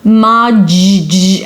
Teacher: The word module starts with 'maa' as well but then it's not a D it's a 'dj' sound, like in 'general'. MAA-juwl. And then it's the u as a YUW.